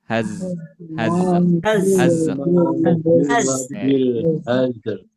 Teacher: suaranya mengalir juga dan dibaca tipis